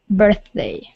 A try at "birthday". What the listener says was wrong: There you go. That's it. Nice job.